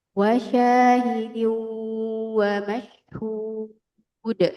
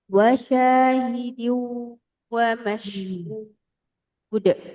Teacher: Jadi wawunya ditahan ya, tanwin ketemu wawu. Ini idgham ma'al gunnah.